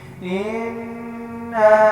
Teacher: یہاں پر انا پہ نون مشدد آ رہا ہے، تو یہاں پہ غنہ بھی ہوگا، اور یہ مد ہے تو یہاں پہ ہم لمبا بھی کریں گے